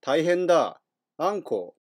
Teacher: 強調しているので後ろが伸びて大変だあんこだと子が長く発音されてなおかつピッチアクセントもちょっと変わっている